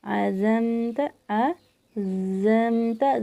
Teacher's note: زا میں سیٹی کی آواز ہے اس لیے ہم پڑھتے ہیں جب زا یہ آواز آئے گی.